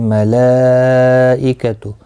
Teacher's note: مد متصل ہے، 4 الف کی مقدار کے برابر کھینچ کر پڑھیں گے